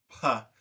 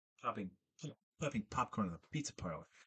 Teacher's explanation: So another reason why I think this is point is because to make a p, you have to have the velum up. You're creating a high pressure consonant, which means that you need to like maintain, you need to not maintain pressure, you need to grow pressure inside your mouth.